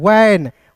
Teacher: ऊपर के दांत निचले ओठ को मतलब छूते हैं।